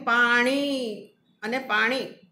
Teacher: આપણે લખીએ છીએ બે ઈ દીર્ઘ અને હ્રસ્વ, પણ એનું ઉચ્ચારણ તો આપણે એક જ કરીએ છીએ.